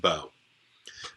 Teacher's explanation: so this isn't like whoa you don't pronounce the W sound there it's just a bow and the next one is known as